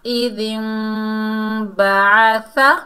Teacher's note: اذن بعث، با کے اوپر زبر، عین کے اوپر زبر، سا کے اوپر زبر، دونوں تینوں کو بغیر کھینچے پڑھیں گے. عین کو حلق کے درمیان سے ادا کریں گے، سا کو نرمی سے پڑھیں گے